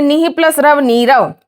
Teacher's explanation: अगर पीछे र आएगा तो दो काम होंगे, विसर्ग भी गायब हो जाएगा और उससे पहले वाली मात्रा भी बड़ी हो जाएगी